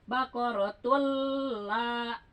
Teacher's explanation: Tapi tunya ditahan karena dia tanwin menghadapi lam. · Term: idgham